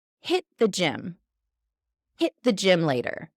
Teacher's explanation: That T really stops us very quickly from continuing. Hit the gym.